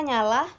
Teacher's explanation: huruf N hidup, nasal, dan lamina palatal